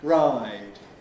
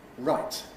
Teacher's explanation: before D voiced we get a longer kind of effect ride. Before T voiceless we get what we call clipping with somewhat shorter right than the D.